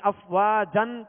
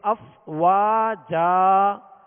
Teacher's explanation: دو زبر کی تنوین جب بھی آئے اور وقف کریں تو اسے الف سے بدل کر وقف کرتے ہیں. الف سے بدل کر یعنی افواجن کہہ کر سانس آواز نہیں توڑیں گے بلکہ وقف کرتے ہوئے الف سے بدلیں گے یعنی ایک حرکت پڑھیں گے، زبر پڑھیں گے افواجا.